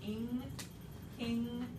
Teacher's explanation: When you squish N and G together like in ing, king, this is the, it's a velar nasal.